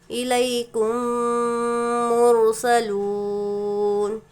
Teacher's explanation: میم ساکن کے بعد میم ادغام شفوی کا قاعدہ ہوگا، غنّے کے ساتھ ملا کر پڑھیں گے.